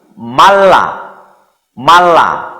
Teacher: Jadi huruf yang mati ini tidak dibaca atau hilang, jadi langsung masuk kepada huruf yang ada tanda double-nya ini